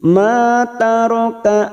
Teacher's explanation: ma fathah diikuti Alif dua harakat Mad Thobi'i